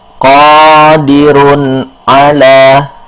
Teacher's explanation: ada tanwin bertemu dengan ain, dibacanya jelas, tidak dengung, tidak samar, dan juga tidak tidak gunah, tidak ditahan. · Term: idhar